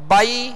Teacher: بائی نرمی کے ساتھ بغیر کھینچے بغیر جھٹکا دیے معروف پڑھنے ہیں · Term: لین